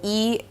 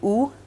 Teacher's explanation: the vowel E and ooh are distinguished mainly by F 2